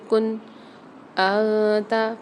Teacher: یعنی یہاں پر ہم غنہ نہیں کریں گے، اظہار کر کے پڑھیں گے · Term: اظہار ہلکی